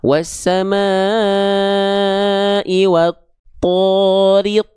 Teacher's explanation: Ya, kalau dia termasuk ke dalam huruf yang karakter pelafalannya tebal, teman-teman sekalian, huruf yang karakternya tebal itu akan terdengar condong seperti vokal O